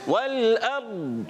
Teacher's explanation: प्यारे बच्चों लाम को भी नहीं हिलाना, रा को भी नहीं हिलाना, और रा साकिन से पहले जब ज़बर आ जाए तो रा को मोटा अदा करते हैं, पुर पढ़ते हैं, इस रा को हमने मोटा करना है।